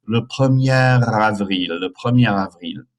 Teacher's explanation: You do liaison there, so it's le premier by itself, but because of the A, you have to link the final R into the beginning A